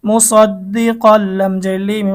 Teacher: তানবিনের পরে বেলাগুন্নার হরফ লাম এসেছে গুন্না ছাড়া মিলিয়ে পড়তে হবে